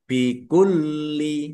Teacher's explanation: lamnya ada tasdidnya dibaca dobel ya ditekan dan ditahan biar tampak dobelnya